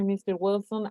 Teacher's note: We have to notice the rising intonation on Mr. Wilson.